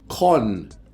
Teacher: So the first kon is done with an unaspirated K, and the second kon is done with an aspirated K, like that. And the first kon is done with an emphatic tone, or what they call a high tone